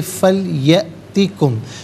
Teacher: حمزہ ساکن ہے، جھٹکے کے ساتھ پڑھا جائے گا، فا علیحدہ، لیاتی علیحدہ، کم علیحدہ، ملا کر پڑھیں گے فَلْيَأْتِكُمْ۔